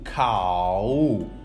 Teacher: a vowel that is produced with a gradually changing articulation, changing from ah to oo, ow. This is exactly what we call in phonetics a diphthong.